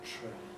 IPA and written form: tɹₒeɪn (train)